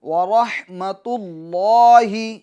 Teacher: را کو پور کرنا ہے، حا کو واضح کرنا ہے، تو اللہ لفظ اللہ کے لام کو پور کرنا ہے۔